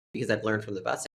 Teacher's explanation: And then we also have another vowel reduction in the word from. She is reducing it to a schwa and it becomes from.